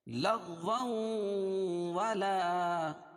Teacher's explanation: تنوین کے بعد ادغام مع الغنہ کے 4 حرفوں میں سے واو آ جائے گی تو یہاں غنہ کر کے پڑھیں گے